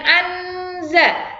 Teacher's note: Non sukun bertemu dengan huruf za itu adalah ifa, samar-samar. Ada ennya tapi juga ada dengungnya.